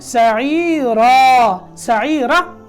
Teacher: را کے اوپر جب وقف کرنا ہے، یہ آگے الف آ جاتا ہے نا، تو اس کو 2 حرکتوں پر کھینچنا ہے